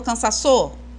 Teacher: E a sílaba tônica tá no sa.